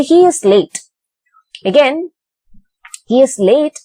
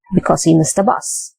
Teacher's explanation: the first clause has to be in a rising intonation and the second clause must be in a falling intonation